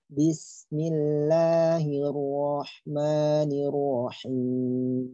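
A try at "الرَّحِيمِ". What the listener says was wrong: Yang ro ketebalan itu. Jangan ar-rahim, ar-ro. Cukup dengan ar-ro itu sudah tebal. Jangan sampai ar-ro. nanti dia malah bisa mengarah kepada dhammah. Ya, jadi tebalnya secukupnya ya, jangan terlalu berlebihan. Jangan Ar-Rahmanirrahim. Itu ketebalan.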